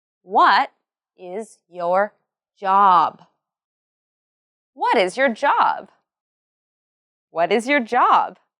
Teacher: this question has a falling tone, and the words what and job are emphasized.